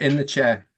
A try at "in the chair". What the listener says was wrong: In the chair. It's not in the chair, okay? It's in the chair, okay? There's no R, okay?